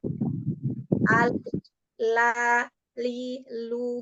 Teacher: yang menempel pada langit-langit itu adalah Ujung lidah yang melebar ke ke arah delapan gigi itu tadi ya iya